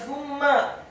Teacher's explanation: huruf sa-nya dibaca tipis, tartiq, lidahnya agak keluar sedikit, dibaca dhammah 1 harokat